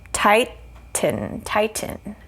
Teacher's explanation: there's a schwa in there but it's it's not a strong vowel so we're going to go with the n sound